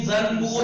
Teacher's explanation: नून, नून में मीम की आवाज आएगी। जंबूर लिखा जाएगा, जंबूर पढ़ा जाएगा।